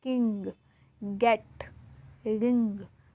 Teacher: The back part of our tongue is going up and touching the soft palate is velar. The English sounds k, k, ng are velar sounds.